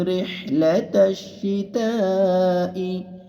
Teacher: শীতা চার আলিফ মাদ হবে